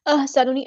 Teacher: ہاں کو مستحرک ان middle throat سے ادا کرنا ہے، سین سے دیوازے کرنی، نون کے پیش کو لمبا نہیں کرنا.